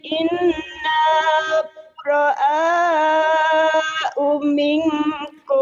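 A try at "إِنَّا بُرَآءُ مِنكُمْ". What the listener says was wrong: Oh-nya pendek ya di situ memang. Inna bura'a uming.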